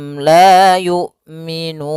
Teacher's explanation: Tapi karena kita wakaf nunnya dijadikan mati nah nun mati ini kita namakan dengan sukun Arif sukun yang